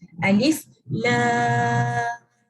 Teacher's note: jadi pertama sekali lam kita akan baca 6 harakat